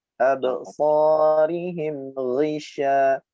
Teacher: angin yang menyebar di dalam mulut atau sifat tafashi namanya.